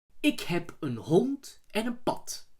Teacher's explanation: Dutch does not have voiced plosives at the end of a word, so a D at the end of a word is pronounced as a T, and a B is pronounced as a P.